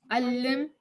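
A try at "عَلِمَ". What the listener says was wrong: No, there's no shadda. Alima. Alima.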